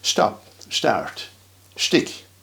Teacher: that ST sound, st, as if there was a H between the S and the T